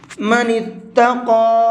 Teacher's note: قاف کو تھوڑا سا کھینچ کر کے بھی پڑھیں گے اور اس کو منہ بھر کے بھی پڑھیں گے